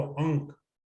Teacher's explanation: यहां जो ये स्वर ध्वनि आ रही है अंक के बोलने में, ये वही ध्वनि है जो कै वर्ग के पांचवें व्यंजन की है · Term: अनुनासिक